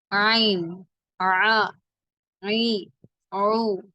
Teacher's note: நாவின் கடைசி பகுதி மட்டும் சற்று மேல் உயர்த்தி நடுத்தொண்டையிலிருந்து வெளிப்படுத்த வேண்டும் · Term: ஐன்